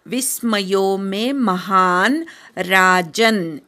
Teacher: हरे हे शेवटचा विसर्ग ऐकू येऊ देत विस्मयो मे महान राजन विस्मय मधल्या वि वर आघात येतो हा पूर्ण म्हणून मग अर्धा न म्हणायचा विस्मयोमे महान राजन ज